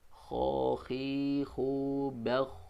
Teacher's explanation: Kemudian huruf kha. Kha juga dari tenggorokan paling atas.